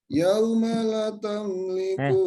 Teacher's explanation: La-nya dipanjangkan. Satu pendek, satunya panjang.